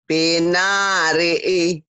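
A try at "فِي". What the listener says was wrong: Pi-nya panjang. Pi-nya panjang.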